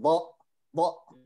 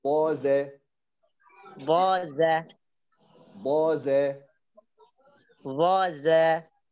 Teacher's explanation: ألا تغلق النفس بشكل مفاجئ يعني لا تقول ضاء ضاء لا لو أغلقت النفس بشكل مفاجئ سيظهر على أنه همزة